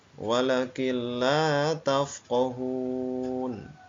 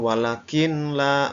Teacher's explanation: lafal pertama Wakina tafqohun Wakin la tafqohun ya tanpa dengung ya Nun mati bertemu dengan huruf lam jadi suara Nun sukunnya hilang masuk ke dalam huruf lam bukan walakin la bukan ya jadi Wakin la tafqohun seperti itu